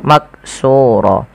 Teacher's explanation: sehingga huruf qf ini wajib dipantulkan ketika dia berharakat sukun maqsur kesalahan yang terjadi di dalam membaca Qalqalah yaitu tidak memantulkan bacaan qnya